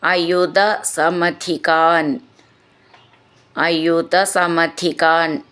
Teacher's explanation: ധി എന്നുള്ള അക്ഷരം നന്നായിട്ട് ഊന്നി പറയണം